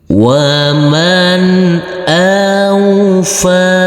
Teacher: huruf fa ini kita baca panjang dengan panjang 2 harokat